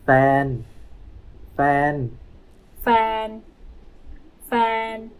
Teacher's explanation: Significant other is fan. Flat tone, fan.